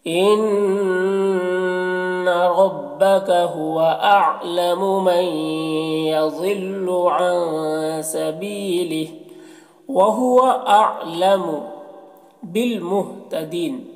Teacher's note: نون کو یا سے ملا کر غنہ کے ساتھ پڑھیں گے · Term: ادغام ناقص